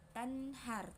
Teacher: Terdapat dua hukum tajwid. Pertama, izhar karena nun sukun bertemu ha. Cara bacanya jelas.